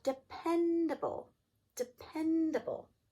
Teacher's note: And you should have heard stress on the pen.